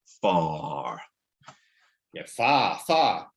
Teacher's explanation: we neither of us pronounce ours at the end of syllables